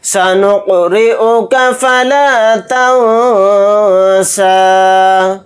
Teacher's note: را کو یہاں پر باریک پڑھیں گے کیونکہ را کے نیچے زیر آ رہا ہے۔ فَلَا تَنسَىٰ، یہاں پر اخفا کا قاعدہ ہو رہا ہے کیونکہ نون ساکن کے بعد سین آ رہا ہے، اور سین حروف اخفا کے حروف میں سے ایک حرف ہے۔